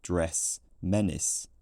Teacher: the modern system has this dress menace vowel substantially lower on the chart